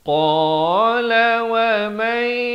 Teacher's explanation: Asalnya wa man jadi wa may, masuk beserta dengung dua harakat. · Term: idgham bi gunnah